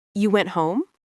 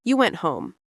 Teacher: If you say you went home with rising intonation, it's a question. If you say you went home, with falling intonation, it's a statement.